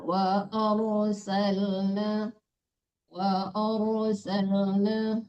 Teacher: Hinya tidak panjang rnya ditebalkan.